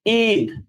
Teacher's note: ইতে হবে আপনার স্ট্রেসটা, মানে আপনাকে এমফ্যাসিসটা দিতে হবে, জোরটা দিতে হবে ওই ই ধ্বনিটাতে। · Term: দীর্ঘ ই